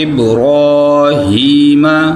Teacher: را کو پر پڑھنا ہے اور با حروف قلقلہ میں سے ہے. ابراہیم، را کو موٹا کرنا ہے